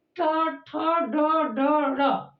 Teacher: जब इसका उच्चारण किया जाएगा तो जीभ का जो आगे वाला भाग है वो ऊपर की तरफ मुड़ जाता है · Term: मूर्धन्य